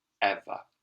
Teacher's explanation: we've also got an example of this schwa sound where we make a short sound rather than a long sound